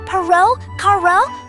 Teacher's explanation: This R is soft, quick, just one single tap of your tongue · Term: single tap R